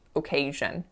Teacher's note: the first syllable is a schwa, and then the second syllable is stressed.